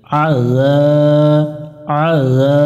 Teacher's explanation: জাল অক্ষর পাতলা করে পড়বো যা শক্ত করা যাবে না